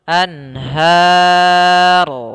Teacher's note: nun bertemu dengan ha, maka ini bacaan izhar, yaitu bacaannya harus jelas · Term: izhar halqi